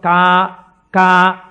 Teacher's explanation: కా కా పలకాలంటే ఎక్కడ పలకాలి? కంఠం దగ్గర పలకాలి.